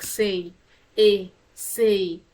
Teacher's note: this is a close mid unrounded sound so when you say say your your your lips do not